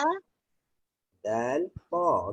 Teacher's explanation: Belakang gigi atas, belakang gigi, hujung lidah bertemu belakang gigi atas